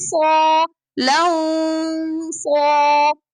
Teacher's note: We are going to stretch it while the back of the tongue is up. Long. Allow the sound to come from both mouth and nose together. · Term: ikhfa